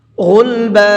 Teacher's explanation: غلبا اور غین کو پر کر کے پڑھیں گے